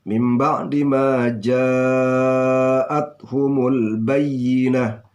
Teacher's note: Ini namanya mat wajib muttasil ya. 2,5 alif atau 5 harakah ya panjangnya.